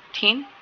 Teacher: the initial sound thin and the final sound of bath are both voiceless dental , कि दोनों क्या हैं, वो voiceless dental हैं। ठीक है,